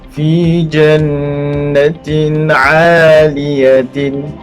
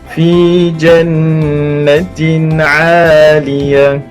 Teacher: kita kena jadikan ta marbutah itu kepada huruf ha yang berbaris sukun.